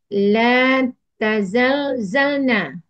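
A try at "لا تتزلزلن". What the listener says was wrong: Tanya dua kali juga. Zalnya dua kali.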